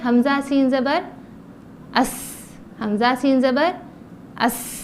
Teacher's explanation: زا کی طرح زبان کی نوک نیچے کے دانتوں کے کناروں سے لگائے